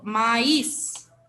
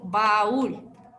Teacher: una vocal abierta más una vocal cerrada Sí pero separadas en distintas sílabas